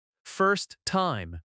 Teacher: The stress falls on first.